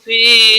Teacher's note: انا انزلناہ فی، یا مدہ ہے، لائی یا لین ہے، یا مدہ کو 1 الف کے برابر کھینچ کر پڑھیں گے